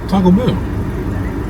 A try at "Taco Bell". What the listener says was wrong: Because some people say it differently. Like, some people put emphasis on the taco. Some people put emphasis on the bell. You put emphasis on the bell. I think I say Taco Bell. So I think I put emphasis on the taco. I say Taco Bell. Like, the bell is like nonchalant. You say Taco Bell. Taco Bell. That's what you say. But I say Taco Bell.